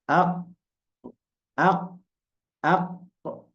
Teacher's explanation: Waktu kita naik pangkal lidah ke atas itu huruful qaf.